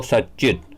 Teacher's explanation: त च में बदल गया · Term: सुचुत्व संधि